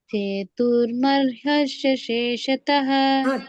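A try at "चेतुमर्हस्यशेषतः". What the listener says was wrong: ಚೇತುರ್ ಹೇಳಬಾರದು ಚೇತುಮರ್ಹಸ್ಯ ಮರ್ ಅಂತ ಬರಬೇಕು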